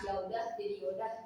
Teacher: Perubahan tersebut itu masuk ke proses elisi vokal yang dimana penghilangan bunyi vokal. Jadi misalkan kalau kata ya udah jadi yaudah, nah itu vokal A itu jadi hilang.